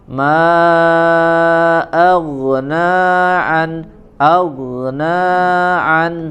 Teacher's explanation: naknya 2 harokat saja ya, 2 harokat, maknya yang dia dibaca 4 atau sampai 5 harokat